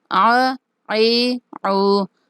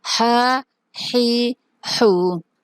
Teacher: عین اور ہا وسط حلق سے ادا ہوتے ہیں